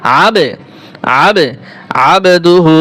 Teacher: কফ ত বা জিম দাল, এই 5 হরফের উপরে যদি জজম থাকে, এখানে কফ ত বা, এই যে বা হরফ আছে উপরে জজম আছে, কলকলা হবে।